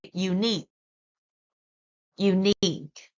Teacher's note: We stress on the second syllable, which is unique.